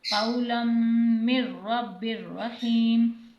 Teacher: میم کو رو سے ملائیں گے اور غنے کے بغیر ادا کریں گے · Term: بلا غنہ ادغام